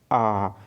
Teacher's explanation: तो भाई आ तो बोल रहा हूँ, तो उच्चारण में क्या हो रहा है, मुख जो है पूरा खुल रहा है, पूरा खुल रहा है, और जीभ जो है ऊपर से घूम करके नीचे में आके बैठ जा रहा है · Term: विविधता